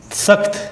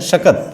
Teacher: क अल्प प्राण है, ख महाप्राण है, तो ख महाप्राण हो गया, महाप्राण से क में बदल गया, मतलब अल्प प्राण में बदल गया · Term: अल्प प्राणीकरण